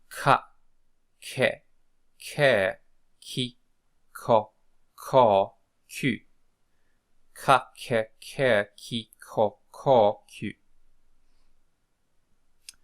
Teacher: the sound of a K followed by aspiration. So it's like k, k, okay? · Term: Kai